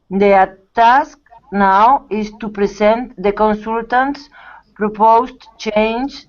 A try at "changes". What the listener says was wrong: changes. Don't forget the S. Changes.